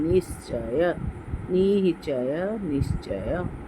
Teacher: सबसे पहला नियम ये देखिए, अगर विसर्ग के आगे अथवा आगे ज या छ हो, च और छ है, तो विसर्ग जो है वो श हो जाता है · ये विसर्ग जो है ये आधे स में परिणत होता है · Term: विसर्ग संधि